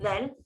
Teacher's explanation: hujung lidah keluar gigi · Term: huruf zal